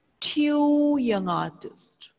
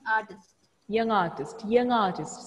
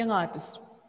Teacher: there is no gap between young and artist you have to say it quickly without break